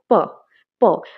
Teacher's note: প্রথমে দেখবে লিপসগুলো একদম বন্ধ হয়ে যাচ্ছে, তারপর এয়ার ফ্লোটা কী হচ্ছে, একটা স্টপ হয়ে যাবে , ব্লকেজ হয়ে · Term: প্লসিভস